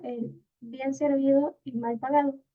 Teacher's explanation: el primer grupo que dice bien servido tiene un tonal más elevado y el segundo que dice mal pagado tiene un tonal mínimo